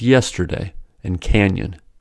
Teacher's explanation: tip of the tongue just behind the lower front teeth and raising the middle of the tongue towards the roof of the mouth the sides of the tongue come in contact with the top